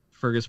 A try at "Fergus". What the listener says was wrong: You're just saying Fergas. That's not it.